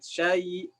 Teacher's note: Mad yang tidak sepenuhnya 2 harokat. Ya, jadi syai, ya, syai, syanya akan dipanjangkan sedikit. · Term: mad dan ma